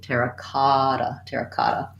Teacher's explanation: our main stress in the phrase is going to go on the kada syllable